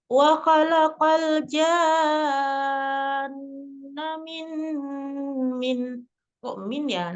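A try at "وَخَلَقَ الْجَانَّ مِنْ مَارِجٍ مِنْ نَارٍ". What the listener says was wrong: Umi manjangnya cuma janamim gitu kan. Nunnya kurang kondahnya itu nun tasdidnya ya. Paling sempurna kondahnya janna. Ya, nunnya ada tasdidnya.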